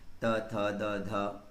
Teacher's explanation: दंत, आपकी टंग जो है ना वो दांतों को स्पर्श कर रही होगी। त, थ, द, ध, देखिएगा आप करके।